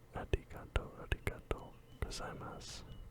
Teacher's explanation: And the R here, your pronunciation, a lot of people think it's arigato, but the way you pronounce the R here is sort of just quickly touching the tip of your tongue to the back of your front teeth